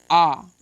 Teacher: जब आ का उच्चारण करेंगे तो आपका मुंह सबसे ज्यादा खुला रहता है विभ्रत स्वर की संख्या एक होती है और इसका उच्चारण स्थान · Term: विवत स्वर